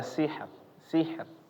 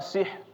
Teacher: di sini contohnya ada sihr sihr sih sih ya sihr Iya jadi tetap kedengaran rnya di akhir tapi dia tipis sihr sih ya jangan malah dihilangin semua ya bapak-bapak sih ya